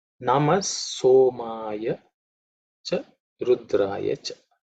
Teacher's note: The mantras are pretty simple because there are no aspirated consonants.